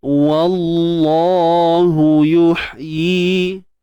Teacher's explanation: Baik, kalimah Allah lafzul jalalah kita baca taghliz, tebal, sebab sebelumnya tebal kan, sebelumnya tebal, sebab sebelumnya baris atas, sebab sebelumnya terdapat huruf berbaris atas. Wallahu, cuma waw jangan tebal. Tebal pada lam je. Wa tu steady je.